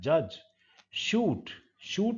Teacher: लगभग टंग चिपक जाता है रूफ ऑफ द माउथ के, उतरता है तो वो साउंड निकलता है · शूट, शूट में मुंह की जो छत है उसके बहुत करीब जाता है टंग, और जो नैरो पैसेज है उस नैरो पैसेज में से हवा जब निकलता है बाहर की तरफ तो वो अपने साथ एक विस्लिंग साउंड लेकर के निकलता है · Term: पैलेटो एल्वियोलर साउंड्स